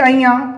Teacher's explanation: अया का उच्चारण स्थान हो जाएगा नासिका तालू